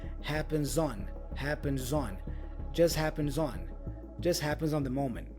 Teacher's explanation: The as for happens has a Z sound, so I join the Z sound with the on preposition.